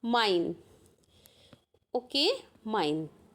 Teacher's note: ई और आई sound जब संयुक्त स्वर आएगा तो उसको हम पढ़ेंगे आई।